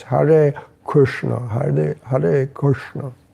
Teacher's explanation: Actually, the Hare is not retroflex, so it's Hare Krishna, Hare Krishna.